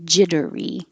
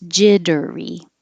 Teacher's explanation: these two T's will change to sound like D's if it's the adjective I feel jittery it'll be three syllables